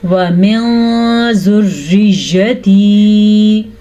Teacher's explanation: نون ساکن کے بعد زال حروف اخفا میں سے ہے تو نون ساکن کو ہم چھپے غنے کے ساتھ پڑھیں گے